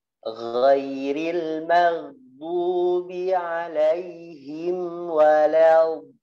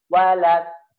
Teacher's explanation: Contohnya saya sempurnakan ghairil maghdubi alaihim waladdallin. Walau ujung lidahnya kayak tertahan tidak menyentuh. Disitulah yang disebut dengan itbaq ya, menguat pangkalnya, menarik ke atas, jadi lidahnya tidak menjulur ke depan